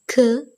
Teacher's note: For the production of k, the back of the tongue gets into firm contact with the soft palate. The soft palate is raised and the shut off the nasal passage of air when the back of the tongue is suddenly moved from the soft palate and the air escapes through the mouth with closure. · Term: velar plosives